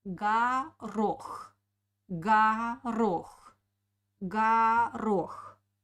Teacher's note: first O we pronounce like A because it doesn't have an accent.